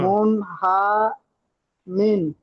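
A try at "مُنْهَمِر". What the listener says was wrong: হ্যাঁ, হা টান হয়ে যাচ্ছে, হা টান হবে না। মুন হামির, মুন হামির, হা টান হবে না। হা, হা টান হবে না। মুন হামির, হা টান হবে না, হা তাড়াতাড়ি পড়তে হবে।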